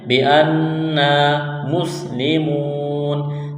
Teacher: حروف مدہ واو ہے تو ایک الف کے برابر کھینچنا ہے، یہاں پر وقف کریں گے تو نون کو ساکن کریں گے